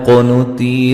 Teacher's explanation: قاف کو موٹا ادا کریں گے اور ساتھ قلقلہ بھی ہے